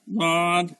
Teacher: জিহ্বার গোড়ার কিনারাটা গিয়ে আমার দাঁতের যে কোনো সাইডের দাঁতের সাথে লাগবে